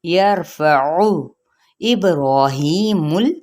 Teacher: لیکن او لمبا نہیں کرنا، نہ ہی مجہول پڑھنا ہے، او کہہ دینا ہے